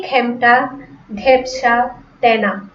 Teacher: যে খাঁটি বাংলা শব্দগুলো আছে সেগুলোতে কি হবে? এ এর উচ্চারণ আ এর মতো হবে। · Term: বিবৃত